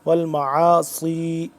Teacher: ما، عین الف زبر عا، والمعا صاد یا زیر سی، والمعاصی صاد کو سین سے جدا کر کے سیٹی کے ساتھ لیکن تھوڑا موٹا